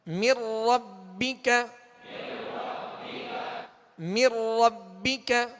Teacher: اب یہ جو غنہ, یہ جو ادغام ہے نون ساکن کے بعد را ہے, را حروف یرملون میں سے, لہذا یہاں ادغام تو ہوگا مگر بلا غنہ ہوگا